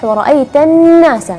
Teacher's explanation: Nah, di situ gunnahnya lebih jelas sekali. Sifat jaharnya jelas dan juga sifat gunnahnya jelas, dan juga jangan lupa gunnah di situ 2 harakat.